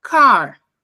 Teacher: esse A tem um som A, bem aberto